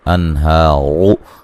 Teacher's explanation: انہار نون ساکن کا اظہار ہے، غنہ نہیں کریں گے ، ہا مد اصلی ہے، را کو موٹا ادا کریں گے،